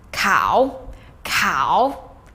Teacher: you have to go way down deep in your vocal register and then scoop up to your more general or natural speaking tone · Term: third tone